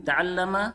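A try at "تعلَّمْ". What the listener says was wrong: Ta'allam sukun.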